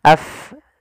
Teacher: gigi atas menempel dengan bibir bawah sehingga keluarnya nafasnya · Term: sifat Hames